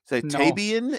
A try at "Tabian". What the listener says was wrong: I'm not a turbine. I'm a tie-bine. It's like a bin of tea, but no, it's a bin of tea.